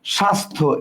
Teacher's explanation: শব্দগুলোতে বফলা শব্দের প্রথমে আছে কিন্তু বফলার উচ্চারণ নেই · শব্দের আদিতে অবস্থিত ব্যঞ্জন বর্ণে যুক্ত বফলা উচ্চারিত হয় না